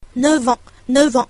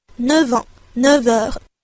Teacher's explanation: 字母▁F，▁它在连音的时候呢，也会有一个变音，发▁v▁的音